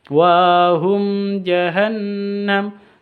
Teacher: mim sukun bertemu dengan Jim izhar syafawi bacanya jelas tanpa dengung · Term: izhar safawi